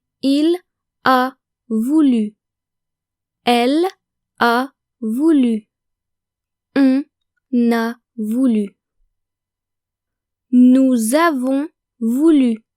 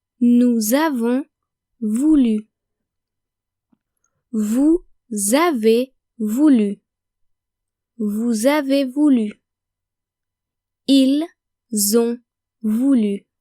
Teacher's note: make the liaison between on, nous, vous, il and elle and the verb avoir, because when conjugated, avoir starts with a vowel